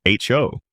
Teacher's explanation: In America, people say ho with a clear long O sound. Ho, making it sound firm and direct. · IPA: /hoʊ/